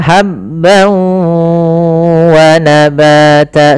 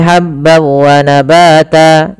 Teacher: masukkan tanwinnya ke waw, hilang suara nunnya menjadi suara waw, kemudian ditahan gunnahnya. Maka habban wa nabata sepanjang 2 harakat lebih sedikit.